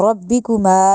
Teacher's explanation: میم کا لمبا کیونکہ الف مدہ کی وجہ سے